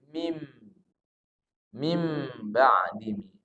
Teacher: nun sukun bertemu dengan ba Ini dibaca iqlam nah diganti bunyi nunnya menjadi mim Min ba'di menjadi mim mim ba'di Nah di sini boleh direnggangkan